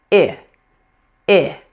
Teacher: Take a look at my face and how relaxed it is and how low pitched that sound is.